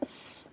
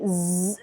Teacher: when we say s, there is no vibration here, but when we say z, there is a vibration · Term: voicing